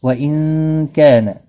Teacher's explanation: نون ساکن کے بعد حرف اخفا کا کاف ہے، اخفا حقیقی ہوگا۔ کا الف مدہ ہے، ایک الف کے برابر کھینچ کر پڑھیں گے۔